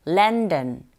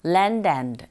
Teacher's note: 접속사 and는 and까지 안 들려요. 거의 앞에 나오는 단어와 연결해서 landand 이렇게 들리는 경우도 있고요.